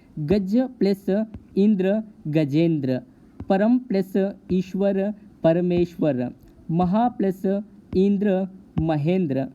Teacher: यहाँ पर आप देख सकते हो कि ह्रस्व आ और ह्रस्व ई, ह्रस्व आ और दीर्घ ई, दीर्घ आ और ह्रस्व ई और दीर्घ आ और दीर्घ ई सभी मिलने पर यहाँ पर ए का उच्चारण आ रहा है। यहाँ पर हमने देखा कि ए का उच्चारण आने पर किस तरह से गुण संधि बनती है।